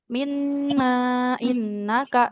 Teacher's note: di huruf nun ini dia dibacanya empat harakat. Empat harakat.